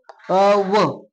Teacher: व एक व्यंजन आहे आणि त्याला कोणत्या मुखाच्या भागातून बोललं जातं तर दंत प्लस ओष्ठ या मुखाच्या भागातून बोललं जातं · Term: दंतोष्ठ